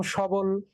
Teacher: এই শটাকে কিন্তু আমরা সো বলছি না, মানে ও বলছি না, আমরা অ বলছি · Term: বিবৃত উচ্চারণ